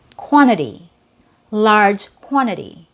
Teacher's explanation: So we have two T's in this word. We have the first T as a disappearing T after an N, after your N sound, and then the second T is actually a fast D.